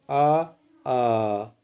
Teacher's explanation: ना तो कहीं जीभ लग रही है सिर्फ गले से आवाज निकल रही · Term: कंठ